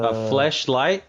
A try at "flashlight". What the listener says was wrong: flashlight. No, you said a flashlight, different different vowel.